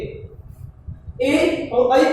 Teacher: ए और ऐ को हम कंठ तालु कहते हैं, क्योंकि ए और ऐ का उच्चारण करते समय कंठ से भी कंपन होता है और उसके साथ साथ तालु से भी कंपन होता है, इसलिए ये संयुक्त कंठ और तालु कहलाते हैं।